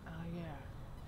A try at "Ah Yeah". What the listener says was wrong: No, that's wrong intonation.